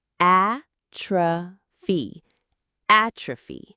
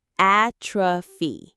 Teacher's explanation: The stress is on that first syllable.